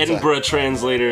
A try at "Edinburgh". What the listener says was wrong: You Americans say Edinburgh. It's not Borough. It's Edinburgh.